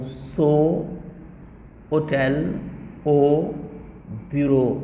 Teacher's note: Donc, vous aurez remarqué que le O peut s'écrire avec un O accent chapeau, avec un AU ou bien avec EAU. Donc, les graphèmes sont nombreux, c'est-à-dire les symboles qu'on utilise à l'écrit, mais ça renvoie à un seul son, c'est le O fermé